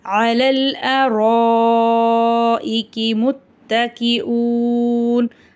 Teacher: இந்த இடத்துல ரா மேலே ஜபர் இருக்கிறதுனால ராவை நம்ம வல்லினமாக ஊதணும். அலிஃப் மேலே பெரிய மத் இருக்கிறதுனால 5-7 அலிஃப் வரைக்கும் நல்லா நீட்டியும் ஊதணும்.